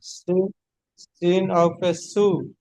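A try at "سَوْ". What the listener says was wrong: হ্যাঁ, সিন ওয়াও জাবার আছে, পেশ নেই।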